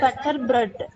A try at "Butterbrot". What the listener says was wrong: Das Butterbrot. பட்டர்னு சொல்லக்கூடாது, ஓகேவா? புட்டர், Das Butterbrot.